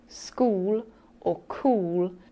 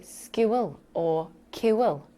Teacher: when they say things like school or cool, they tend to say skewel or kiwil, almost adding in an extra syllable.